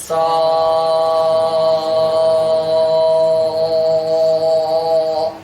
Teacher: Cara menebalkannya bukan dengan bibir, tapi dengan mengangkat pangkal lidah itu menjauh. Ya. Contohnya begini, sin nih perhatikan.